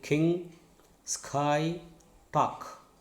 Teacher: Okay, raised to velum, right? So it is a velar voiceless stop.